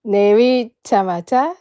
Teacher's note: You pronounce it re, like R in English, but we don't have R, so make it L sound instead.